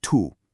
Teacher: When you say the T in Portuguese, don't do it like the English word to, where your tongue hits the roof of your mouth. Instead, try tapping the tip of your tongue on the back of your front teeth. It makes this soft, kind of chi sound